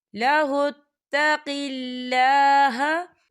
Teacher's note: یہاں پر اللہ کا نام باریک پڑھا جائے گا کیونکہ اللہ کے نام سے پہلے زیر ہے تو ہم اسے باریک پڑھیں گے.